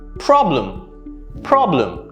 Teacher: notice how the e sound is very soft it's the uh sound again even notice the e replacing the replaced by the schwa sound